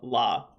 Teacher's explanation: we also have the lateral approximant la like an L in English